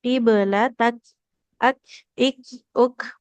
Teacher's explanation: hams di huruf kafnya belum keluar